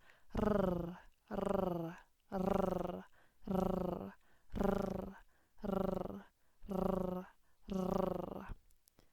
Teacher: in English, we do not have a rolling R that's used in Spanish